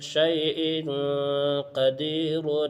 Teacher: دیکھو حمزہ کے نیچے دو زیر کی تنوین ہے اور تنوین کے بعد حروف اخفا میں سے قاف آیا ہے، اس لیے یہاں بھی اخفا ہوگا، یعنی تنوین کی آواز کو ناک میں چھپا کر پڑھیں گے